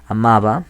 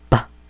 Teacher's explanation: esa sería una B que no es oclusiva, pa, sino es fricativa